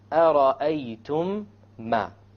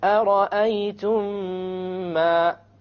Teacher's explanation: You have once again the meme sakin followed by a meme. You merge it together and you have a ghunna. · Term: idgham shafawi